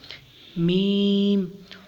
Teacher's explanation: دونوں ہونٹوں کے خشک حصہ سے ادا ہوتا ہے۔ میم دونوں ہونٹوں کے خشک حصہ سے ادا ہوتا ہے۔